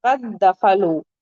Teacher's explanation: دال کا مخرج بھی سیم ہے اور صفت بھی سیم ہے، تو اس کا اس میں ادغام ہو جائے گا۔ دو دال پڑھیں گی آپ، تین دال نہیں پڑھیں گے